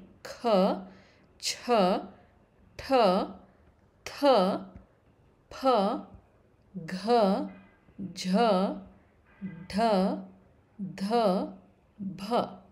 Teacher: the letters kha, cha, pha, jha requires more breath to pronounce. Therefore, all these letters are ಮಹಾಪ್ರಾಣಾಕ್ಷರಗಳು.